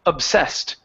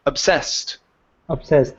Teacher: the stress is at the very end of the word obsessed